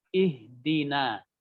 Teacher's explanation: ada ihdina, huruf nun itu harus tipis